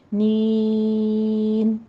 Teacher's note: count کرنے ہیں، میں حمزہ کو جھٹکے سے پڑھیں گے، اور نین میں اپنے ناک میں آواز نہیں لے کر جانی ہے، اسٹریٹ رکھنی ہے